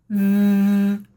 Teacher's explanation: And the way I'm doing that is I put my tongue in between my teeth, turn my voice box on.